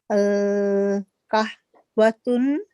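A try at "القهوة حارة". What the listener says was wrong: Al Kahwato. When there's alif lam, it's Al Kahwato.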